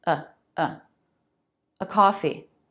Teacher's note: Now, we don't say a and an. We say uh and schwah. Very fast. Very little movement of the mouth.